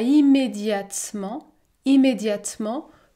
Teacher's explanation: je ne prononce pas la voyelle eu